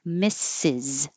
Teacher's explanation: Misses, this was brought up a very good point that when I say misses by itself, misses, this last S will sound like a Z.